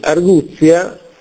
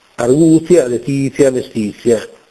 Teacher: la Z è semplice nella grafia ma in realtà è una geminata una doppia